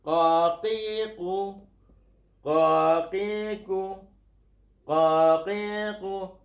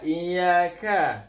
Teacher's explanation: Qaf berbeza dengan kaf. Ka, iyaka lembut. Qaf tebal.